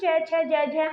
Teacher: या तालव्य भी कई बार इसको बोला जाता है ये हमारा च वर्ग का उच्चारण स्थान हमारा क्या होता है तालू या तालव्य होता है